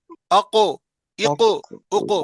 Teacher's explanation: زبان کی جڑ جی اوپر جی. نرم تالو سے لگے، یعنی کوے کے پاس نرم تالو سے لگے، تب یہ قوف ادا ہوتا ہے